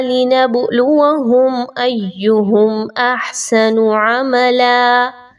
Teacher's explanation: Next آیہ مبارکہ میں اس کی جانب چلتے ہیں، اور یہاں پر جو ایک ورڈ ہے لِنَبْلُوَهُمْ، اس پہ توجہ دیجیے، با کے اوپر جزم کی علامت ہے اور با جو ہے وہ حروف قلقلہ میں سے ہے، آپ نے با کو تھوڑا سا ہلا کر پڑھنا ہے۔ ایہم، اس میں یا کے اوپر سیٹی کی آواز نہیں آنی چاہیے، ہاں جی یا کے اوپر سیٹی کی آواز نہیں آنی چاہیے، لیکن حمزہ اور یا کو مضبوطی کے ساتھ ضرور ملایا جائے گا۔